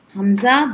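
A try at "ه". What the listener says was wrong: حمزہ نہیں ہے، ہاں ہے بھائی.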